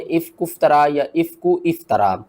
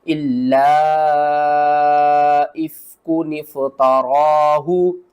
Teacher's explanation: काफ को भी पढ़ेंगे, नून को भी पढ़ेंगे, और नून को हम फा से मिलाएंगे, दरमियान वाली अलिफ को हमने छोड़ देना है। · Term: नून कुतनी